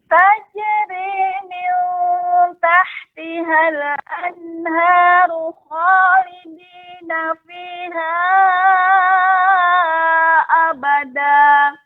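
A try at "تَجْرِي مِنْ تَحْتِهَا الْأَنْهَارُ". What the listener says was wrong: Ibu masih terasa pengucapan min. Ya, cukup saja pengucapannya min tahtihal dengan min tah. Nah, tidak langsung ke tidak diangkat suaranya jadi seperti isti'la. Jadi min akan tapi cukup min ya. Tajri min dengan min. Nah, ini yang terus nanti Ibu perbaiki sedikit-sedikit ya, sehingga tidak terangkat.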